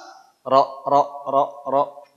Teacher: huruf ro huruf r itu adanya di ujung Lidah Tidak ada urusan dengan bibir jadi Kalau bibirnya dirusak ro ro ro ro bunyi karena huruf